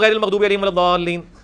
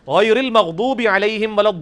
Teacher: حرام ہے ایسے پڑھنا, وہ مد واجب ہے, وہ کھینچنا ضروری ہے کم از کم 5 الف تک